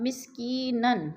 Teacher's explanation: اب مسکینن، 2 زبر تنوین ہے، وقف کی صورت میں 2 زبر نہیں پڑھیں گے بلکہ مسکین ایک زبر میں بدل کر پڑھیں گے